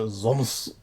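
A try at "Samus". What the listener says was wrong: No, it's like the way you pronounce it. It sounds like you're using a Z instead of an S.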